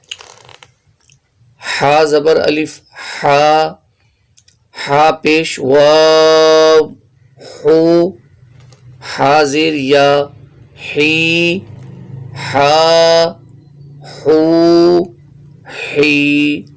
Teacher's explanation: ہا بھی درمیان حلق سے پڑھا جائے گا اور اس کو ہا کی طرح نہیں پڑھنا، ہا کا مخرج الگ ہے، ہا کا مخرج الگ ہے، اس لیے ان حروف میں واضح فرق کرنا ہے۔